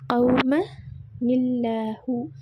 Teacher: தன்வீனை அடுத்து வரும் அல்லாஹ் என்ற வார்த்தை உள்ள லாம் தொடர்ச்சியாக ஓதும்போது மெல்லினமாக உச்சரிக்கப்படும்